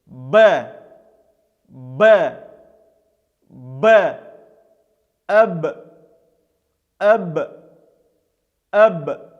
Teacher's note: Этот звук также является звонким. То есть при произнесении этой буквы мы даем голос, работают наши голосовые связки. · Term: губно-губной